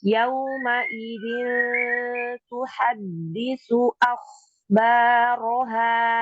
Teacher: Dalnya jangan lupa ada dua karena ada tasydid. · Paling dekat dengan huruf nun adalah huruf ta. ujung lidah bertemu dengan tempat tumbuhnya gigi seri, maka bunyinya samarnya tidak terlalu jauh, tidak terlalu bunyi eng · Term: ikhfa